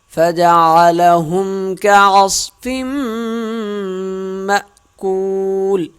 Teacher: صاد موٹی پڑھیں گے، فا میم کے ساتھ مل جائے گا، یہاں کیا جائے گا غنہ. مأکول حمزہ پڑھا جائے گا، جھٹکا دیں گے ہلکا سا. کاف واو پیش کو ایک الف کے برابر واو ساکن کو کھینچیں گے اور لام آخر میں ساکن ہو جائے گی.